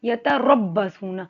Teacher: یتربصون، را کو موٹا پڑھیں گے، را پہ زبر ہے، را چاہے موٹی ہو باریک ہو، اس کو ایسے پڑھتے ہیں جیسے زبان وائبریٹ کرتے ر کی آواز آنی چاہیے